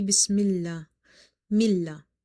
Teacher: So the word Allah will be light here because of the kasra under the meme.